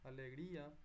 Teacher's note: hay acento en la I, que es débil, alegría. Entonces, hiato, porque hay separación.